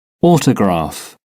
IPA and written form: ˈɔːtəgrɑːf (autograph)